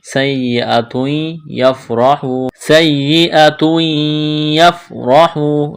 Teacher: تنوین کے بعد یا ہے، یہاں ادغام کریں گے، یعنی تا کو یا کے ساتھ ملانا ہے